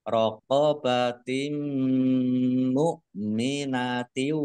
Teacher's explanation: kasroh tanwin bertemu dengan huruf mim, bacaan idgham bi gunnah masuk dengan mendengung. Mendengung mim, mimnya ditahan biar tampak dengungannya